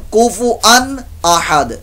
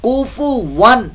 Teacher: कुफुअन अहद गलत है, कुफुवन वाऊ की आवाज